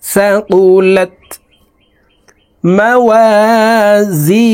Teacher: মাংফুশ وتكون الجبال كالعهن المنفوش فأما من এখানে ইকফা গুন্না নুন সাকিনের পরে ইকফার 15টি হরফের ভিতরে একটি হরফ সা আসছে, এই কারণে এই নুন সাকিনকে নাকের ভিতরে লুকাইয়া গুন্নার সহিত পড়ব।